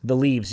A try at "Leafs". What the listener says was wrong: Like make like a tree and leave? Leafs. There's an F in there.